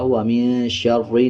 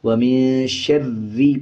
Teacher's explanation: جب شین کو را کے ساتھ ملانا ہے تو را کو پر نہیں پڑھنا بلکہ باریک پڑھا جائے گا، وَمِن شَرِّ نہیں بلکہ وَمِن شَرِّ پڑھا جائے گا۔